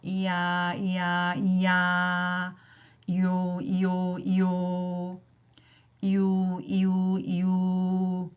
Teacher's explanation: 중간에 입술 모양과 혀의 위치가 변화가 있더라 이중 모음이었어요